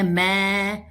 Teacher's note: मैं शब्द में ऐ की मात्रा लगती है और इसके साथ अनुस्वार अर्थात बिंदी का प्रयोग किया जाता है और इसको बोलते समय मैं ऐसे करके बोला जाता है, जिससे ऐ की मात्रा और बिंदी दोनों की ही आवाज स्पष्ट सुनाई देती है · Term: मैं का सही उच्चारण